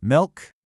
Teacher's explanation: When you start the list, you use a rising tone because you're signaling that there's more to come.